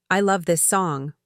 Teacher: with strong stress on love. People know you mean it.